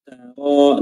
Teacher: Ta-nya jangan terpengaruh kedengaran seperti tebal tak karena tebalnya huruf ro setelahnya. Ta-nya biasa saja tartik.